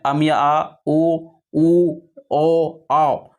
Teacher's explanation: पक्ष स्वर जिसमें हम लोग पीछे का भाग का प्रयोग करते हैं जीभ का